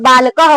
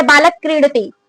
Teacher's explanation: जैसे बालक क्रीडती, तो जल्दी से बोल रहे हैं ना, तो यहाँ पे विसर्ग, ये विसर्ग है लेकिन क्या है इसका जो उच्चारण रहेगा वो आधा रूप में होगा, आधा विसर्ग का लेके बोलेंगे, पूरा विसर्ग का नहीं बोलेंगे, लंबा नहीं बोलेंगे, थोड़ा सा बोलेंगे। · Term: अर्ध विसर्ग